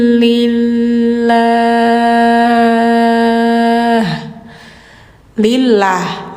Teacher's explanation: karena didahuluinya harakat yang bawah jadi bunyinya tipis